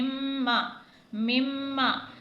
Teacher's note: پھر آگے میم مشدد ہے، میم مشدد پر بھی ہمیشہ غنہ کیا جاتا ہے